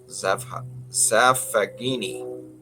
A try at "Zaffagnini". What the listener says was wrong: Zaffanini. It's like sign, the G is silent. Zaffanini. Zaffanini.